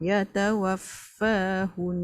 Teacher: Kena dengungkan. Dia wajib unah mesti dengung walaupun dah wakaf.